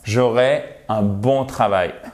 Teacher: quand c'est un futur simple donc sans s ça devrait se prononcer normalement comme un accent aigu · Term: E accent aigu